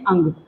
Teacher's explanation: अनुस्वार का उच्चारण स्थान नासिका मात्र